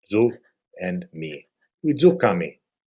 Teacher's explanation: our stress is on the third from the last syllable and the final syllable.